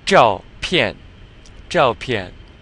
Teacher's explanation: So this ZH is just like in 中 国, so you're curling your tongue. Except it has this ending.